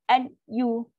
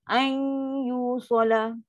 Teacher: Huruf pertama nun sakinah tu bunyinya berubah kepada huruf kedua. Kan nun mati tadi jumpa ya. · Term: idgham naqis